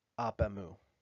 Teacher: begins with a vowel what you do in that situation is eliminate the vowel at the end of the first word and mark it with an apostrophe this process is known as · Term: elision